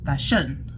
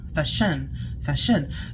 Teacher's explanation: Rather, when we pronounce fashion, we normally focus on the first syllable, but they were focusing on the second syllable